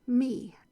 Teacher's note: The E says its own name. It's a long vowel, and there's no consonant on the end to stop it. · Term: open long vowel syllable